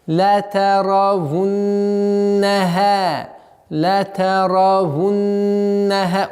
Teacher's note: Удержать назализацию в размере двух огласовок.